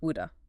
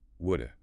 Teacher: We don't even say the V sound. We turn it into a schwa, a sort of grunt.